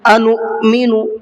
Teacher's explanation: انؤمن، یہاں حمزہ ساکنہ ہے، اور حمزہ ساکنہ کو جب ہم پچھلے لفظ سے ملا کر کے پڑھتے ہیں تو جھٹکے کے ساتھ میں پڑھتے ہیں، انو نہیں پڑھیں گے اس کو، ٹھیک ہے۔